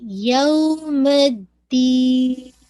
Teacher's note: Nasal sound last میں، دال پہ آپ کا کوئی قلقلہ نہیں ہونا چاہیے. یوم الدین ایسے نہیں، یوم الدین.